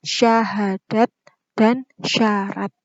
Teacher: diantara gigi seri atas dan bawah sini gitu bisa dipraktekkan masing-masing dorongan nafas ketika mengucapkan huruf syin itu lebih kuat · mahroj huruf syin yaitu tengah lidah dengan langit-langit